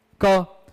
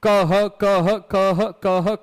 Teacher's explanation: तो क बोलने में कितना प्राण लगा, थोड़ा सा, और क ह बोलने में कितना लगा, ज्यादा।